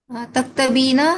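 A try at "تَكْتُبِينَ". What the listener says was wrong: ताबे पेश है, दूसरे वाले ताबे पेश है।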